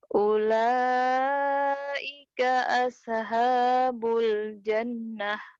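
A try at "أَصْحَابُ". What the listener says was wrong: Aso, aso, jangan ada aso. Nih dengerin. Ula, ulaika as, aso, jangan ada e-nya. Ulaika ashabul jannah.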